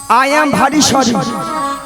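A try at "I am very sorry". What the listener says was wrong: আই এম ভারী নয় মাসি, বলো আই এম ভেরি সরি। হ্যাঁ সরিটা ঠিক হয়েছে, কিন্তু ভারী ভেরির বদলে ভারী হয়ে গেছে।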